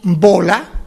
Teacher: la B primera de bola es una B oclusiva, es decir, unimos los dos labios de manera que no sale el aire, quitamos, o sea, lo separamos y sale el aire.